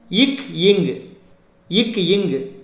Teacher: ஐ அடுத்து வாய் திறக்கும் முயற்சியுடன் இதழ்களை குவிப்பதால் பிறக்கும் உயிரெழுத்துக்கள் உ அடுத்து நாவின் முதற்பகுதி அன்னத்தின் அடிப்பகுதியை பொருந்துவது பிறக்கும் மெய்யெழுத்துக்கள்